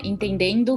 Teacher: os linguistas chamam isso de ditongação de vogais nasais essa ditongação acontece bastante em vogais nasais chama bastante atenção no e né